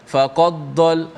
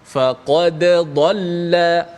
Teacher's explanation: Bacaan dimatikan dal, mana kena bunyi qalqalah lah. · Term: izhar